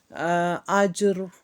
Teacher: اس کے ادا کرتے وقت زبان میں ایک لرزہ ہوتا ہے، اس وقت زبان میں تکرار کی مشابہت ہو جاتی ہے۔ مطلب اس کا یہ نہیں کہ تکرار کو ظاہر کیا جائے، بلکہ اس سے بچنا چاہیے، چاہے را پر شد ہی کیوں نہ ہو، کیونکہ وہ ایک ہی حرف ہے، زیادہ حرف نہیں ہے۔ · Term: تقریر